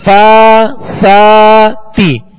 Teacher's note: تو کھڑا زبر جو ہے یہ الف مدہ کے قائم مقام ہے، اسے دو حرکت یعنی ایک الف کی مقدار دونوں حروف کو کھینچیں گے